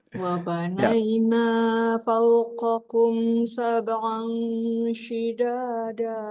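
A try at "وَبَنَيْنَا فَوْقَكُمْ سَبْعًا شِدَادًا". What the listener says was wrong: Naknya masih kepanjangan, hati-hati, Bu. Wabanaina segitu coba.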